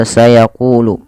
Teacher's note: qaf yang berharakat dhammah bertemu waw, maka panjangnya ku dibaca 2 harakat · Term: mad tabi'i